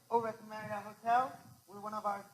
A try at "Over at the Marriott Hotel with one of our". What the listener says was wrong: He sounds like he's a songbird almost, right? Okay? The problem is you need to start your tonality lower. You need to give yourself room to manage. Remember, you're managing tonality within a range. Learn your range.